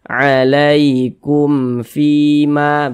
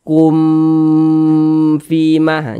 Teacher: karena dia izhar maka dibaca jelas tidak berdengung kita baca pendek saja alaikum Fima begitu Jangan dibaca kum Fima jangan dipanjangkan seperti itu